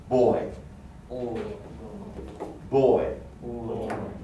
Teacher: the third uh diphthong is the one that begins with the mid back vowel and then moves to the front as in like the word boy not bowie but boy now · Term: third diphthong